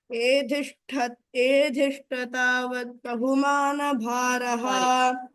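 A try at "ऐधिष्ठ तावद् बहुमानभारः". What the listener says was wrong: Sorry, not a. Aidhishta, because it is two. No, it's not a. Aidhishta तावद् बहुमानभारः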